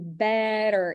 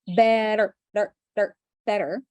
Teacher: It's called the flat T, better. It's the one in the middle between t and d. It's the very, very fast D sound